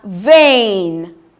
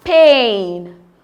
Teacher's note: It starts as a closed mid-front vowel and glides onto a front vowel E.